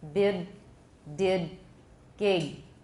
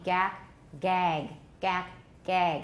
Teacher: So G is going to be easier to hear due to velar raising.